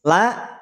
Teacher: Lam termasuk yang tipis. Maka pada saat pengucapan huruf lam, pangkal lidah kita tidak perlu naik.